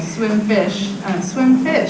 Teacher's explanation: So it's not that different from the one-word stage, except that these two words are becoming prosodically grouped. Right. So they're in one phrase now.